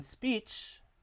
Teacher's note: in speech the p is following an s sound so it becomes unaspirated